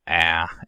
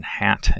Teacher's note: the low front vowel ah as in hat